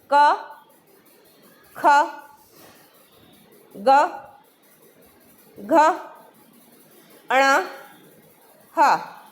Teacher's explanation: बोलिए अब मेरे साथ, क, ख, ग, घ, अण, ह। तो ये जो आवाज़ है ये हमारे कंठ से आती है, इसलिए इन्हें कंठस्थ व्यंजन बोलते हैं।